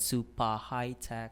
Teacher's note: I also noticed the dropping of the final R sound